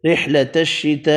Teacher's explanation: بڑی مد 5 الف کی مقدار میں کھینچ کر پڑھی ، صاد حروف مستعلیہ پر پڑھا، صیالین پڑھا، فا ساکن پڑھا